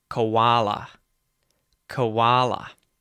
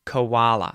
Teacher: you may notice there the o in the word koala is actually a schwah sound. So you're going to hear uh uh right that neutral vowel sound in English.